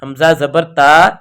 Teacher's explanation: حمزہ زبر تا، آواز لوٹ کر نہیں آئی، آواز وہیں رک گئی ہے۔ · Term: غیر قلقلہ